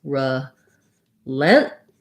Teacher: where we're not really going to let that T out · And then with our stressed vowel, relent, we have the vowel like in red. And then we're going to have what's called a stopped T here. The way that's going to sound is it's going to sound like relentless.